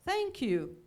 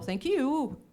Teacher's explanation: o brasileiro sempre coloca, né, a entonação lá no final